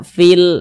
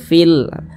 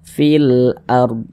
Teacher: Kalau alif lam qamariyah, huruf lamnya dibaca izhar.